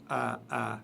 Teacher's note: C'est la lettre Alif, A, comme je l'ai dit tout à l'heure. A, tout au fond de la gorge, le son A et le son Ha